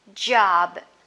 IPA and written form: dʒɒb (job)